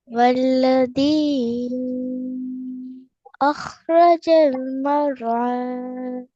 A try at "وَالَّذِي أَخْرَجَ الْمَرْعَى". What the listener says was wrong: மர் லைட்டா பண்ணிங்க.